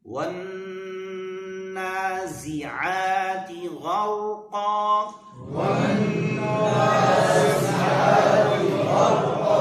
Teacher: نون پر غنہ کریں گے، زا کو شدت کے ساتھ ادا کریں گے، عین کو پر ادا کریں گے۔